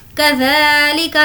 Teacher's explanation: ज़ा को खींचेंगे, खड़ा ज़बर